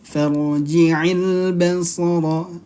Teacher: Farji'il basara hal tara. Farji'il, ra sukun sebelumnya berharakat fathah, maka dia dibacanya apa? Tafkhim atau tebal.